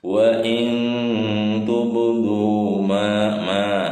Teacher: Hukumnya mad tabi'i. Panjangnya 2 harokat.